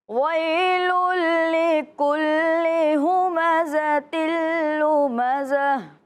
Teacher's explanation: آپ نے ادغام کرنا ہے بغیر غنہ کے